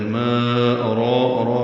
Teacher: ارا میں را پر ہے، دو حرکات لمبا کریں گے